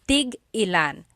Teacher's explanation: Tig-ilan is a homonym, meaning it can have different translations depending on how it's pronounced. So tig-ilan, when there's a hyphen in it, you have to have that glottal stop.